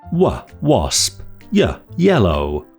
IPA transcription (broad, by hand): w Wasp j Yellow